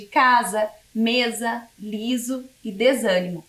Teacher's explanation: como no exemplo de casa mesa liso e desânimo perceba que o s nessas palavras está entre duas vogais e por isso ela assume o som de z · o grafema S pode assumir a pronúncia de Z quando aparece no meio das palavras entre duas vogais